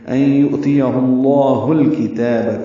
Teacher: یؤتیہ اللہ، ہا کو اقصی حلق سے ادا کرتے ہوئے لام اسم جلالہ سے ملائیں گے اور پر پڑھیں گے. ہا کو الکتاب کے لام سے ملا دیں گے. ان یؤتیہ اللہ الکتاب، کاف تا باریک ہیں.